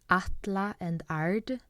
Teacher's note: They're spelled with ä, satna ä, but they're pronounced with a.